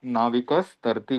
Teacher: त भी दांत से है और यह हलंत स जो है वो भी दंत्य है इसलिए सीधा-सीधा नाविकस तरती कर दिया है।